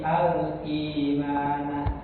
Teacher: hamzah yang kedua ini dibadalkan, digantikan dengan huruf mat yang menyesuaikan harokat kasroh pada hamzah sebelumnya. Nah, maka digantikan kan menjadi huruf ya. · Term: mat badal